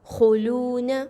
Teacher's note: خوا جو ہے وہ حروف مستعلیہ میں سے ہے، پر پڑھا جائے گا یعنی کہ موٹا حرف ہے